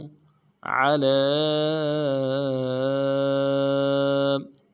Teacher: عین کو موٹا واضح ادا کرنا ہے، لام کے اوپر کھڑا زبر ہے اور مد عارض ہے، ڈائی الف دال میں کھینچے گی۔